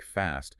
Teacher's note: the a in words like Fast sounds more like ah in British English